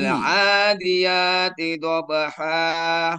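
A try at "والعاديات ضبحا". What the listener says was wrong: Nah, naik.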